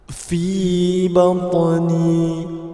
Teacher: huruf ta ialah huruf qalqalah yang bertanda sukun dan terletak di tengah-tengah kalimah. Maka hukum bacaannya ialah qalqalah sughra, perlu didetakkan dengan sederhana.